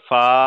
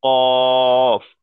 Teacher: ফাটাকে একালি পরিমাণ টান দিয়ে পড়বো ফা, আর কফটাকে তিনালি পরিমাণ টান, কফ